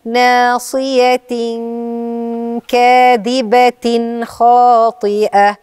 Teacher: عندك ناصية ده إخفاء تمام وبعديها كاذبة هيبقى عندك إظهار النون بتاعة التنوين